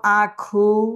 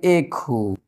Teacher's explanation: প্রথম স্বরধ্বনিটা ছিল কি আ হইলো কি এ তাইলে আ ধ্বনিটা পরিবর্তন হরে এ হয়ে গেল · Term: পরাগত স্বরসঙ্গতি